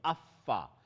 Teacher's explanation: Fa is articulated between the inside of the lower lip and the tips of the two front incisors. And so in other words, and from the inside of the lip, so the fa with the edges of the two top incisors.